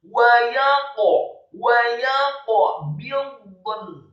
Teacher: Kata wa yaqbidun, wawunya dibaca fathah 1 harokat, kemudian ya-nya dibaca tipis fathah 1 harokat, dan qafnya dibaca sukun. Membaca huruf qaf dibaca tafkhim dan wajib untuk diqalqalahkan atau dipantulkan